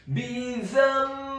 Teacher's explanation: Maksudnya merubah di sini adalah merubah gunnah huruf nun yang sukun menjadi gunnah huruf mim yang sukun sebelum membaca huruf ba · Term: iqlab